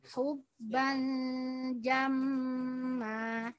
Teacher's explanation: Ada dua guna di sini. Yang pertama, tanwin ketemu jim, ikhfa. Yang kedua, mim tasydid. Kadarnya harus sama dua-duanya.